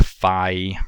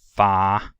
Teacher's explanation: in bi the articulation starts farther forward than it does in ba.